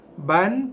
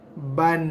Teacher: Ba, sebab dia baris dua, bila sebut je ba, kita terus bunyikan dia dengan bunyi tambahan bunyi N, ban, lidah kita akan naik ke langit depan, atas sikit daripada gusi. Atas sikit daripada gusi tempat tumbuh gigi. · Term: berbaris tanwin